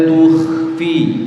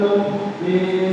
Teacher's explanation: kha itu punya sifat khawa namanya, jadi mengalir suaranya.